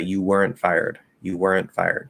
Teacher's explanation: i'm closing into the n but i'm dropping the t